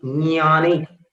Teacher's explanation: ज और ञ दोनों ही तालु से उच्चारित होने वाले वर्ण हैं, व्यंजन है। · फिर ज में ञ मिलाना है तो एक सुंदर सी ध्वनि होती है ज्ञान, ये एक हल्की सी क्लिक, इंटरनल क्लिक जैसी आवाज होती है।